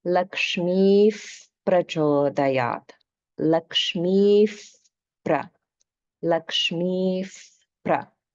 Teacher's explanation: the Visarga is pronounced as the Upadhmaniya form of Visarga. That's Upadhmaniya, meaning that it's pronounced with the lips. So it's like a f sound, like a fa sound in English.